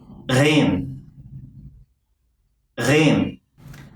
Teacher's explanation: This letter is pronounced as a velar fricative, meaning that the back of the tongue and the soft palate come close to each other without touching. Your vocal cords have to vibrate during the articulation.